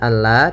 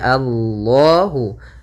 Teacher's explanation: lamnya harus dibaca dengan tebal